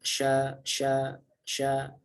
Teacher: Jadi beda ya antara sya dengan sa, sangat berbeda jauh itu. Sya di sini tidak memiliki shafir, tidak ada tambahan suara huruf sya karena dia menyebar suaranya, tebal juga, ya kan? · Tafashi itu yaitu menyebarnya aliran suara pada huruf shin. Jadi sya itu menyebar di mulut, di dalam mulut.